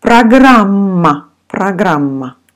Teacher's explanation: so all vowels in this word sounds like ah